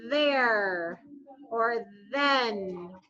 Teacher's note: it touches kind of the back of your teeth the top of your mouth and it vibrates too · you can feel the vocal cords vibrating so that's why we call it voiced